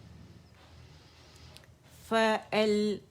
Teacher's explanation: حمزہ جو ہے یہ اقصی الحلق سے کی ساؤنڈ کے ساتھ نکلے گا